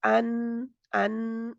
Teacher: जुबान की नोक जो है ऊपर वाले दांतों के मसूड़ों से यानी के गम एरिया से लगी रहेगी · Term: नून